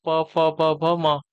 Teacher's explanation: प, फ, ब, भ, म यह आपके ओष्ठ वाले हो जाएंगे